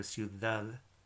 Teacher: I've done like a TH sound with both of the D's.